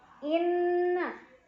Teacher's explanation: Inna, ada gunnah musyaddadah karena ada nun yang bertasydid. Cara bacanya didengungkan, ditahan kurang lebih 2 harokat.